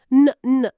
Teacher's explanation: చివర ఎన్ శబ్దముంది. న్ న్ అని అంటే గొంతులో వైబ్రేషన్ స్పష్టంగా తెలుస్తుంది. ఇది వాయిస్డ్, కాబట్టి 3వ నియమం ప్రకారం దాని ఉచ్చారణ రెయిన్డ్.